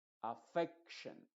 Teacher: Todas las palabras que terminan en action, la E se pronuncia con su sonido modificado. De hecho, la E es la que va a llevar la fuerza de la voz en estas palabras. · Entonces no vamos a decir t sino sh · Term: sonido sh